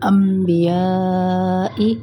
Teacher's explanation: अब इक़लाब नून जो है नून के ऊपर ना मीम बना होगा, यानी अब नून के आवाज़ को मीम में बदल देंगे